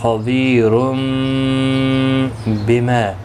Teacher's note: قلب ہوگا, اخفاء شفوی ہوگا. غنہ کے ساتھ پڑھیں گے